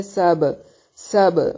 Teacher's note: با پہ قلقلہ ہوگا، سین کو باریک سیٹی کی ساؤنڈ کے ساتھ ادا کریں گے